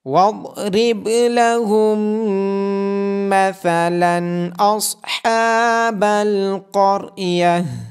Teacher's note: آواز کے ساتھ پڑھا جائے گا، با پہ قلقلہ ہوگا اور میم مشدد ہونے کی وجہ سے میم پہ غنہ کیا جائے گا